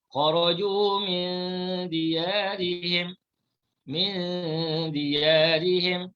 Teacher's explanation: Jadi dal, ikhfa hakiki, cara bacaan. Nun dibaca secara sama-sama serta didengungkan.